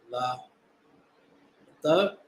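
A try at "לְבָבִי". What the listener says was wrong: Yeah, don't forget the Yah. It's that little mark in the air.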